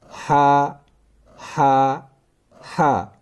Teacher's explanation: हा, हा, हा, दो हा है कुरान मजीद में, एक है हा हलक का दरमियानी हिस्सा, हा हलक का इब्तिदाई हिस्सा। इस हा का मखारिज है हलक का इब्तिदाई हिस्सा